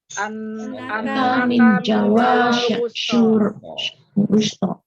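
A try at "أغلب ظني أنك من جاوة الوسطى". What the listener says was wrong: Pakai sin berarti bukan shin. Annaka min Jawa al-wusta.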